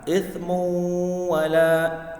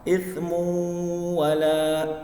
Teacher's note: Nah, ithmu wala dibaca berdengung. Ya, dibaca berdengung. Karena ini bagian daripada hukum bacaan idgham bi ghunna